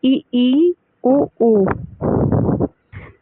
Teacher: मुंह द्वार जो होता है वो सकरा रहता है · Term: संवृत